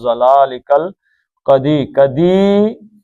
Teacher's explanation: ضلالکا لام پہ آپ کو مد بدل نظر آ رہی ہے، دو حرکتیں